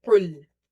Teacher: Qaf is heavy because it's from the musta'aliya letters, the heavy letters, or full mouth letters.